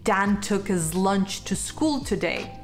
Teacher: in english there are instances where we don't pronounce the letter h like when a word beginning with the letter h is in the middle of a sentence